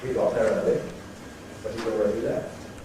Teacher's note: we break it into two. We break it between the two tone units.